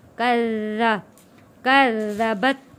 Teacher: کذبت، یہاں پہ کا تشدید ہے ذال کے اوپر، ذال کو نرمی کے ساتھ پڑھیں گے۔ ذال کے اوپر جو تشدید ہے یہ 2 بار، یہ ذال 2 دفعہ پڑھا جائے گا